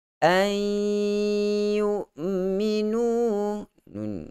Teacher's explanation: Bukan kita masukkan secara total, tetapi hanya kita masukkan sebahagian bunyi nun itu ke dalam huruf ya. Ada bunyi nun, masih ada lagi bunyi ya. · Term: idgham